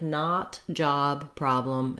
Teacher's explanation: All of these words have an ah sound, nothing rounded like an O.